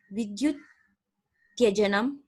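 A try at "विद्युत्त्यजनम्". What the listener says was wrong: Vidyut Tyajanam. Where is Tyajanam?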